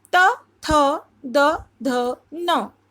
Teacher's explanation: दांत के पास ही एक जगह होती है उच्चारण स्थान, जिसको वत्स बोलते हैं।